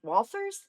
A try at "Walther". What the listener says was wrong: Just Mike Walther, just one of me.